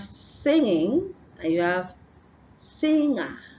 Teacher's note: the n and a g is is like fused together and give you the sound